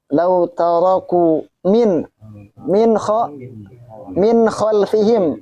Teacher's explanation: Izhar itu artinya jelas. Minnya itu tidak disamarkan ataupun tidak didengungkan. Kenapa? Karena ada nun mati ketemu dengan kho.